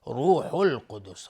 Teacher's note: روح القدس را اینجا حکمش استعلاست چون ضمه داره. القدسی الف لام قمری و قاف از حروف استعلاست.